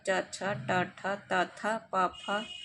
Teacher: अघोष जिनका उच्चारण करते समय स्वर यंत्रं में कंपन नहीं होता है